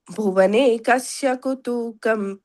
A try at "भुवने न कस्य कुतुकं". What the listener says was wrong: Again, that fourth line, that na, you missed it. Bhuvane na kasya kutukam.